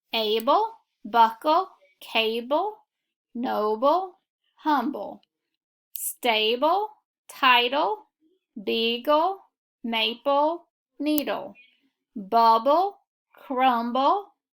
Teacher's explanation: the e is going to be silent and you're going to put a schwa before the e